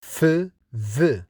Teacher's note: Four labiodental consonants are made with lower lip against the upper front teeth to produce f, v. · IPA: /f,v/